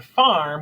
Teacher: getting even more complex we move into R controlled vowels and this is when the r kind of takes over the vowel sound that's in the word so in farm we don't really hear the a in there · So in farm, we don't really hear the A in there. We do for just a brief second, and then it moves right into that R sound.